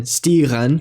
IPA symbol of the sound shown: ɣ